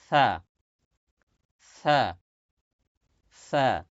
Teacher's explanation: জিহ্বার আগা সামনের উপরে দুই দাঁতের আগার সঙ্গে লাগান